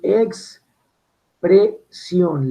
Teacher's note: nos damos cuenta que la I y la O están en una misma sílaba. Esto es un diptongo, yo pronuncio expresión, la I y la O están en una misma sílaba.